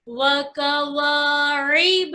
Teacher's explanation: वाव में मुकम्मल होठ गोल कीजिए बच्चों, दोनों वाव में।